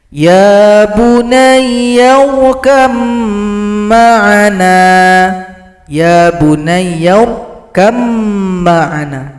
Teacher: ba yang sukun tidak dibaca lagi karena telah gabung kepada huruf mim. Idgham mutajanisain.